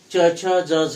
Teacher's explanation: च छ ज झ म्हणताना जिभेचा वरच्या टाळूवर आपला जो स्पर्श होतो तो भाग म्हणजे तालू आहे कठोर तालू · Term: तालव्य